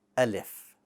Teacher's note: Alif should be light, meaning that the back of your tongue stays flat, and that will allow your mouth to somewhat open in a horizontal position.